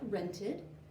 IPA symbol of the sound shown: id